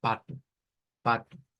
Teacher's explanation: es una a abierta como la del español y una u que ya la hemos visto en varias ocasiones · O al final de una palabra en portugués se convierte en U. Entonces, lo que nosotros le decimos pato y que lo leeríamos así como pato, ellos lo leen como pato, pato.